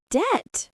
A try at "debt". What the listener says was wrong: Right, but the B is silent, so we just say debt. So remember, no B sound in debt.